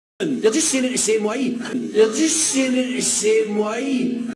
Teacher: In Scottish Standard English, the word way ends in a monophthong